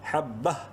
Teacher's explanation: اور وقف مطلق کی علامت تو کی وجہ سے یہاں ہم وقف کر سکتے ہیں، اور وقفاً چونکہ لاسٹ لیٹر جو ہے وہ گول تا ہے، اور گول تا جو ہے آپ کو بتایا گیا ہے کہ وقف کی صورت میں ہا پڑھی جاتی ہے، یعنی نہ صرف اس کی دونوں زیریں اڑیں گی بلکہ اس کے نقطے بھی اڑ جائیں گے.